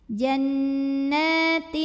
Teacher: Jadi kita siap-siap ke makhraj huruf ta disertai bunyi dengungan. Jannatin, ujung lidah kita sudah siap-siap menempel ke pangkal gigi seri atas ke makhraj huruf ta. Nah, tapi ini dengungnya sedikit saja karena ta ini makhrajnya masih dekat dengan nun. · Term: ikhfa aqrab